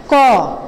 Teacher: ক উচ্চারণের সময় আমাদের জিহ্বার শেষের দিকে যে আল জিহ্বাটি রয়েছে, এই জিহ্বার ঠিক পিছনে, একদম সঙ্গে পিছনে সেই জায়গা থেকে উচ্চারিত হচ্ছে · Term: কণ্ঠমূলীয়